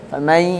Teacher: harus didengungkan karena sebelumnya nun. Nun itu huruf hidung.